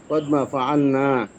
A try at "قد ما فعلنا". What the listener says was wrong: হ্যাঁ, মাতে কিন্তু মাঝে মাঝে টান ছুটে যাচ্ছে। কদ মা ফাআলা, মাতে টান টান দিতে হবে, হ্যাঁ।